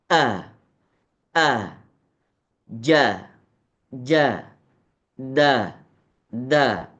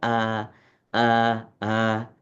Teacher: kalau huruf yang syiddah itu ketika kita melafalkan a a jadi ketika mau keluar huruf alif ya itu seakan-akan ada tekanan terlebih dahulu baru dikeluarkan a a ja ja da da jadi ada ada tekanannya berbeda